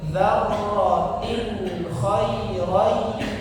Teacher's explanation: Zarnya ditekan, tinnya pendek